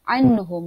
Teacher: nun berjumpa dengan ha dibaca tidak dengung, kita kena zahirkan, maka kerana dia izhar halqi